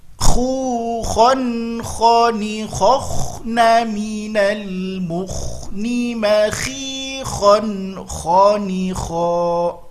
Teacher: Ingat, dia harus mengalir ketika sukun, ya, harus mengalir ketika sukun karena dia sifatnya rokhawah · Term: huruf kho